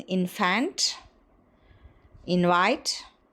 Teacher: N is realized as labiodental nasal when it is immediately followed by v